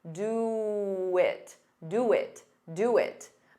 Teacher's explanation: For sounds like fur, very unstressed. And do it, to get rid of that pause, you can add a very soft w.